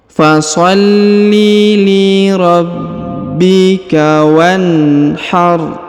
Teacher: huruf wa perhatikan langsung disambung masuk ke huruf na Yang sukun sedangkan alifnya tidak dibaca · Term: Hamzah wasal